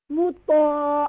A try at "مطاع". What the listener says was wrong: You can make more long because is after is alif madda. مطاع.